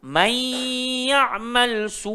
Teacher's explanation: nun mati bertemu ya, idgham ma'al ghunnah, masuk terus dekat dalam ya.